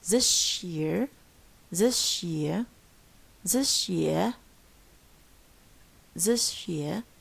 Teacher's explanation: So if sa followed by a ya, it turns into a sh.